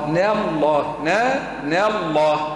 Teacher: رقق النون نفخم اسم الجلالة